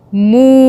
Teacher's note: میم واؤ پیش مو، ہم نے پیش کے ساتھ میم کو کھینچا، مدہ ہوئی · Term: واؤ مدہ